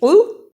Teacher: قاف اور کاف دونوں کی آواز میں فرق ہے، دونوں کے مطلب میں بھی فرق ہے. یہاں قاف موٹا پڑھا جائے گا، نقطوں والا قاف ہمیشہ موٹا پڑھا جاتا ہے